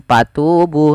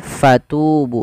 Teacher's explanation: fa alirkan nafas, karena fa punya sifat huruf hamas, yaitu harus mengalirnya nafas. Jangan dibaca dengan patubu, tapi fatubu dengan f.